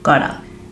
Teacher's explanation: Got to is often shortened into gotta, where the two T sounds combine and even make a little bit of a soft D sound